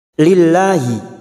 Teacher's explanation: lam jalalah yang dibaca tarkik karena didahului kasrah